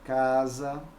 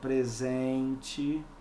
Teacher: a letra s tem som de z entre duas vogais